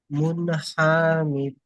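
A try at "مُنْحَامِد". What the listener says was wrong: হা টান আছে? ফের হা টানা যাচ্ছে।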